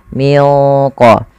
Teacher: huruf qf yang paling jauh daripada makhraj daripada huruf nun maka Dia membacanya menyamarkannya kepada huruf qf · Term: ikhfa Hakiki